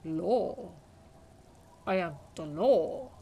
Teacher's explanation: the word law sounds oddly guttural and low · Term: Lawjaw